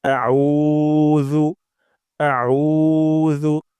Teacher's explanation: উতে অবশ্যই অবশ্যই এক আলিফ টান দিব অর্থাৎ দুই সেকেন্ড পরিমাণ লম্বা করব · আমরা আইন উচ্চারণ করব গলার মাঝখান থেকে আউ আউ হামজা শক্ত, আইন গলার মাঝখান থেকে। তারপর জু, জু উচ্চারণ করব জিহ্বার আগা, সামনের উপরে ২ দাঁতের আগা থেকে আউযু এবং তে অবশ্যই ১ আলিফ টান দিব।